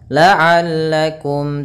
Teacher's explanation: mim mati bertemu ta, izhar syafawi kembali, yaitu suara mimnya harus dibaca dengan jelas. Tattaqun.